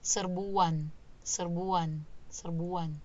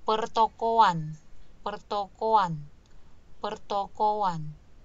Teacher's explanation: kalau kita sebutkan kan memang ada bunyi luncuran W